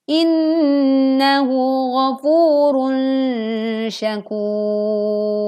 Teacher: saat ro sukun dan kita berwakof, lalu sebelumnya ada huruf alif atau huruf wawu, maka dibaca tebal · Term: ro dibaca tebal